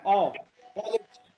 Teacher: ऑ का स्वर है, आ और ओ के बीच की ध्वनि ऑ। हमारी हिंदी की नहीं है, अंग्रेजी की ध्वनियों को व्यक्त करने के लिए हमने एक अर्धचंद्र बना दिया, ठीक है।